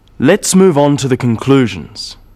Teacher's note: stressing conclusions because it's the key word in the sentence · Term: sentence stress